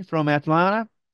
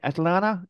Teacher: 그래서 NT의 T 발음이 빠지면서 Atlanta 이렇게 발음이 되는 겁니다. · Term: NT 발음